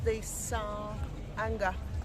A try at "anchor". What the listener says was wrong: Anchor, not anger. She's confusing her English. Anchor, not anger.